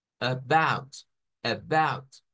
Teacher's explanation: subimos el volumen de la voz el tono en la parte de about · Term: Stress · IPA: /əˈbaʊt/